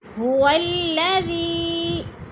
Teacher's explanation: هو الذی، ذی پہ جو ہے مد منفصل ہے، حروف مدہ کے بعد حمزہ دوسرے کلمے میں آ گیا ہے تو مد منفصل 4 الفی مد ہیں، 4 الف کے برابر ہم نے اس کو کھینچ کر پڑھنا ہے